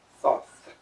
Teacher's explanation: The name is two thetas pronounced without any sound, but only with aspiration. It's the human vocalization of the sound that serpents make.